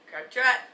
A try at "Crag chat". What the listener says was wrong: You put way different emphasis on it than I did. You said Crag chat. Emphasis on the chat.